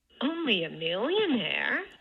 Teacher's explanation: for the millionaire, it's dipping down here for the mill part and then rising after it when you get into the second syllable, but not really specified whether it's second or third or whatever. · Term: low star plus high